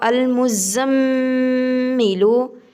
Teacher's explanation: میم گنہ ہے، شد ہے، شد کی وجہ سے گنہ ہوگا